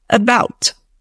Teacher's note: in the word about, the schwa is present in that first A